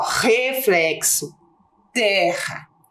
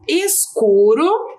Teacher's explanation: depois nós temos o r entre vogais com som fraco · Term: som forte